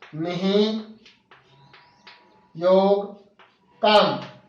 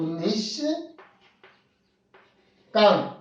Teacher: उदाहरण से हम देखते हैं, निहि योग काम, यहां विसर्ग है और इस विसर्ग से पूर्व में ई है जो स्वर है और बाद में क है, तो विसर्ग मूर्धन्य श में बदल जाएगा